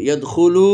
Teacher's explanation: ওয়াও সাকিন ডানে পেশ, এটাও একটা মদে তবাই, এই জন্য টানলাম